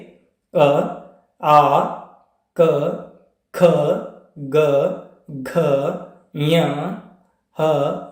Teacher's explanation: Slides ಗಳಲ್ಲಿ ಯಾವ ಅಕ್ಷರಗಳು ಎಲ್ಲಿ ಹುಟ್ಟುತ್ತವೆ ಅನ್ನೋದನ್ನ ನೋಡ್ಕೋತಾ ಹೋಗೋಣ ಒಂದೊಂದಾಗಿ ಕಂಠ ಕಂಠದಲ್ಲಿ ಕೊರಳಿನಲ್ಲಿ ಅಥವಾ ಗಂಟಲಿನಲ್ಲಿ ಹುಟ್ಟುವಂತಹ ವರ್ಣಗಳು · ಕಂಠದಲ್ಲಿ ಕೊರಳಿನಲ್ಲಿ ಅಥವಾ ಗಂಟಲಿನಲ್ಲಿ ಹುಟ್ಟುವಂತಹ ವರ್ಣಗಳು ಯಾವ್ಯಾವ ಅಂದರೆ, ಉದಾಹರಣೆಗೆ ಅ, ಆ, ಕ, ಖ, ಗ, ಘ, ಞ, ಹ ಮತ್ತು ವಿಸರ್ಗ ಅಕ್ಷರಗಳು. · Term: ಕಂಠ ವರ್ಣಗಳು